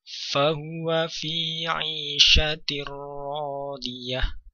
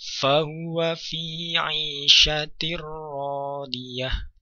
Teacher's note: Tanwin pada huruf ta marbutah, kemudian setelahnya jatuh huruf ro, sehingga di sana berlaku hukum idgham bila gunnah. Suara tanwin atau suara nun sukun melebur ke dalam huruf ro tanpa disertai dengan gunnah.